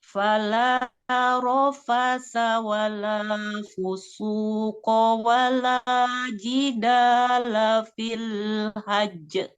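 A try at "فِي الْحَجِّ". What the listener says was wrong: Nah, jimnya di sini bertasdid, tahan dulu. Fil hajj.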